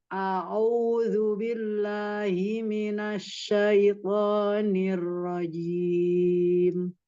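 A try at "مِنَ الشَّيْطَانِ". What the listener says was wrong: Ya, shin-nya dorong lagi. Minasya dorong.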